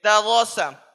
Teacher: مثال کے طور پر یہاں پر جیسے دروسا ہے تو دال، رو، سین، ان تینوں کے اوپر زبر کی حرکت ہے، حرکت کو جلدی پڑھیں، تھوڑا بھی نہ کھینچے، زبر کی آواز اوپر کو جاتی ہے